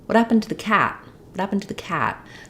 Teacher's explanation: the word cat is stretched so it's long and it has the clear vowel